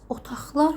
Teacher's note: Bu zaman q samiti x kimi, yəni otaqlar formasında tələffüz ediləcək.